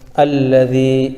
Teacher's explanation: یا ساکن سے پہلے زال کے نیچے زیر ہے، اس لیے یہاں پر یا مدہ ہوگا، ان کو تھوڑا کھینچ کر پڑھیں